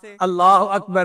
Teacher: کسی اور لام میں یہ تفخیم نہیں ہو سکتی، صرف اللہ کے نام کو پر پڑھا جائے گا